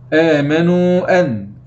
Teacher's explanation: إذن هذا مد جائز منفصل، يجوز مد 4 أو 5 حركات، 4 أو 5 حركات من طريق الشاطبية، ويجوز قصره إلى حركتين فقط من طريق طيبة النشر.